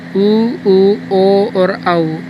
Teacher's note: उ, ओ और औ, ये हैं वृत्ताकार स्वर जिनमें होठ गोल होते हैं। ये जब हम उच्चारण करते हैं तो हमारे होठ गोल होते हैं, इसलिए इनको वृत्ताकार स्वर कहते हैं।